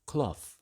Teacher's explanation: Cloth, on the other hand, merges with lot in RP, received pronunciation, resulting in cloth.